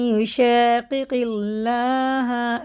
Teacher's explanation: اللہ کا لام زیر سے باریک پڑھیں گے